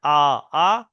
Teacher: 18 নম্বর মাখরাজ হলো আলিফের মাখরাজ, মুখের খালি অংশ থেকে উচ্চারণ হয় আ, আ, মুখের খালি অংশ থেকে আ, আ। দেখেন কেউ কারোর সাথে লাগছে না, মুখের খালি অংশ থেকে উচ্চারণ হচ্ছে।